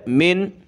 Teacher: یہاں حروف ہلکی کا ورڈ خا ہے آگے, اس لیے ہم نے یہاں ناک میں آواز نہیں پیدا کرنی, ایزی پڑھنا ہے.